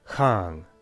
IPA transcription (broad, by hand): xaaŋ